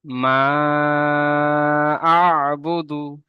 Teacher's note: মাটা মধ্যে মুনফাসিল, 2 থেকে 3 আলিফ পরিমাণ টান দিয়ে পড়তে হবে, কারণ দ্বিতীয় শব্দের শুরু থেকে হামজা এসছে তাই